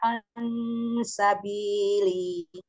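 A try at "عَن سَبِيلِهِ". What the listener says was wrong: An sabili. Li. Haknya tetap mengalir walaupun di akhir. An sabili.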